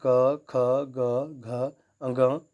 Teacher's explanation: sorry कंठ इनका उच्चारण स्थान है